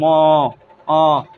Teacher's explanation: নাসিক্য ম দেখো নাকে উচ্চারণে আসছে ম